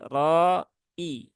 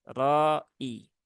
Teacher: hamzahnya diperjelas ya bukan Roi tetapi ro i